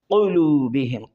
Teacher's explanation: قوف زبان کی جڑ اوپر کی تالو سے ٹکر کھائے